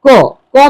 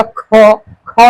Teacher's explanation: क में बहुत कम हवा निकलेगा। जैसे ही आप बोलिएगा ख से मुंह से हवा बहुत ज्यादा निकलता है